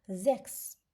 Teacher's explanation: Əvvəldə gələn S isə Z kimi oxunacaq.